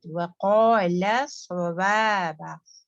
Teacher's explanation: वक़ा heavy ला light